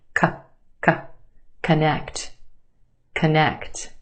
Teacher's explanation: First syllable becomes the schwa. K, k. Very quick, unemphasized, schwa sound.